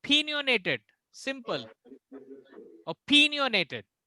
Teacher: O will be silent ना, O का जो साउंड होगा बहुत डीम होगा, वो O जैसा साउंड नहीं आना चाहिए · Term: स्क्वा